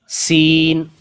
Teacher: جو سین ہے وہ سختی سے سیٹی کی آواز کے ساتھ پڑھنا ہے